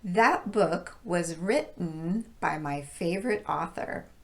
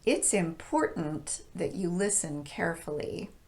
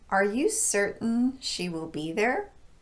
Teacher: glottal stop that's used in T vowel N combinations